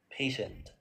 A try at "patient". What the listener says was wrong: yeah, patient. Only on the p sound was not clear, but now it's very clear.